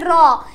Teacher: দেখো এরপরে আসো কম্পনজাত ধ্বনি। জিহ্বার অগ্রভাগ কম্পিত করে এ ধ্বনি উচ্চারিত হয় বলে একে কম্পনজাত ধ্বনি বলে